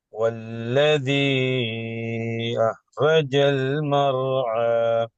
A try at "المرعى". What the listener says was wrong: மறு என்று போகக்கூடாது. இந்த ராவ கலக்கக்கூடாது. மறு என்று போகக்கூடாது. مرعى. مرعى.